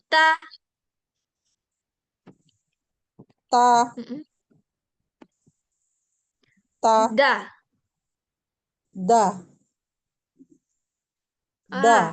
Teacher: da dia sama kayak ta dan to di belakang gigi